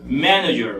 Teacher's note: mayor fuerza de voz está en man